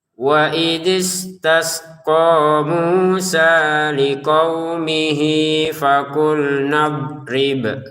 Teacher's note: di sini kita baca panjang dua harakat karena kita menggabungkan liqaumihinya dengan fakulnya ini ya. Kalau kita berhenti liqaumih enggak ada panjang sama sekali.